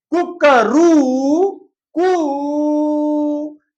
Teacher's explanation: तो कुक पहला जो ऊ है छोटा है, रू बड़ा है, थोड़ा ज्यादा समय लेता है, काल लेता है, और कू ये लंबा लिया। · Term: प्लुत